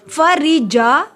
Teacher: را کو باریک پڑھیں گے. را کے نیچے زیر ہے. جا کو لمبا کیا.